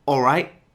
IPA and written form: ɔːˈraɪʔ (Alright?)